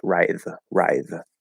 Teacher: That is definitely not writhe. That's not a voiceless th. That does not work. Yeah, that's voiced.